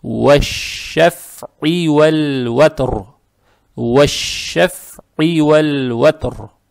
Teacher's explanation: гортанная айн с касрой. Эту касру произносим через гортань, но ее не тянем. То есть, как только произнесли, сюда сразу надо переходить.